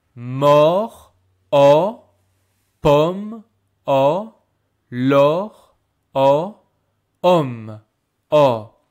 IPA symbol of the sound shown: ɔ